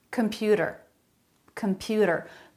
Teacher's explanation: him computer computer they're all saying that with a flap computer a flap instead of a t sound